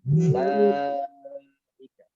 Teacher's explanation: Tapi ulaika langsung wawunya seakan tidak ada. Ada tapi nggak dianggap. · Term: sifar mustadir